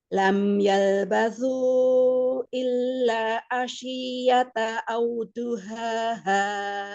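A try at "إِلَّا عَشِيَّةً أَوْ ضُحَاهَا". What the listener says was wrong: Ada izhar halki. Asyiyatan ada fathah tain. Sin. Umi banyak sin jadi sya gitu.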